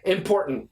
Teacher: The tongue never moves. Once I hit my first T, it stays there. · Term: stop T